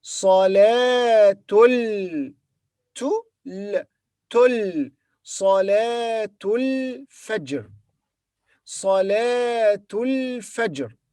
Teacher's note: when we connect the two words, the Ta marbuta will be pronounced as Ta, not Ha, and the Alif in Al-Fajr will be silent · alif in the beginning of the word al-Fajr is not pronounced here, because it is not in the beginning of the speech, as it follows another word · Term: alif here is silent